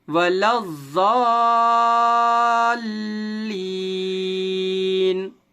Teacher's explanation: لام اور ضاد کے درمیان یہ ایک الف, یہ دوسرا الف اور یہ لام, یہ تینوں حروف سائلنٹ ہیں, پڑھے نہیں جائیں گے. لام کو ہم سیدھے ضاد میں ملائیں گے کیونکہ ضاد کے اوپر تشدید ہے. آپ جانتے ہیں کہ تشدید والے حرف کو سختی کے ساتھ 2 بار پڑھتے ہیں, ایک بار پیچھے والے حرف سے ملا کر اور ایک بار خود تشدید والے حرف کو.